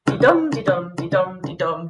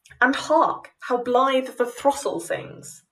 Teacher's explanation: Alternating iambic tetrameter and iambic trimeter, built on the iamb, a poetic foot consisting of an unstressed syllable followed by a stressed syllable